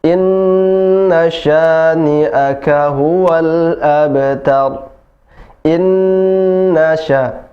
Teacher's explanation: na-nya tidak panjang lagi. Kalau inna yang pertama tadi panjang, inna yang kedua tidak panjang.